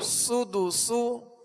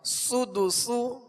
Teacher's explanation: دونوں سین میں سختی کی آواز ہوگی، یعنی سیٹی کی آواز ہوگی، سختی سے ادا کریں گے اور باریک پڑھنا ان کو